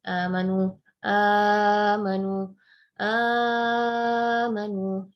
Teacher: Kalau di riwayat Hafs seperti saya sampaikan tadi bahwa itu harus kita baca 2 saja, amanu, udah titik. Nah, tapi Warsh membacanya Amanu 2, 4, dan 6 harakat. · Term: salasatul badal